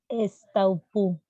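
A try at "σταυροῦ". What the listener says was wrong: Estaurú. que la que parece una B no es una B sin una N, la que parece una P no es una P sin una R.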